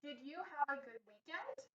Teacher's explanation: we have that question mark and our voices go up at the end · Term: intonation